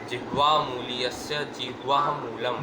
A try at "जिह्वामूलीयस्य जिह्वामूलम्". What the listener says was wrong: जिह्वा, वहाँ भी जिह्वा मूलम, हाँ, जिह्वा नहीं ना बोल रहे हो, लग रहा है कि वाह वाह कर रहे हो।